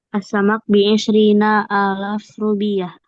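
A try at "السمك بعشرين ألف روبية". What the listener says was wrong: Nah, jangan dipanjangin. Bi'ashrina alf rubiah. Bi'ashrina alf atau alfa rubiah. Kalau alaf itu alaf 3 sampai 10 ya, panjang.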